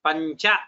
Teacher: Pancha is what rolls off the tongue, because chakara is going to come from talu. So nyakara also has to come from the talu.